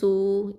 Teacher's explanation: இது வந்து வாவுல் மத்து 2 ஹரக்கத்தை நீட்டணும்.